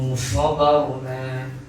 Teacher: Barna ra tasdid. Ra yang duduk, ra yang mati yang sebelumnya ada huruf bagi atas atau bagi depan mesti ditebalkan